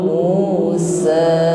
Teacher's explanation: Jadi mu dengan sa panjangnya sama-sama satu alif atau satu ayun, tidak lebih dari satu ayun.